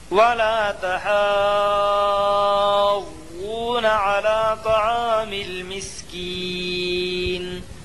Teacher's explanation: یا مدہ کو ایک الف کے برابر کھینچ کر پڑھیں